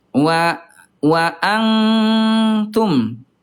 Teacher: yang kedua itu dengungnya kebanyakan